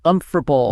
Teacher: a native speaker drops an entire syllable and just smashes the consonants together